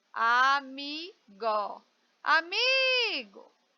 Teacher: Vem cá, veja que eu me demorei mais no mi. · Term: sílaba mais forte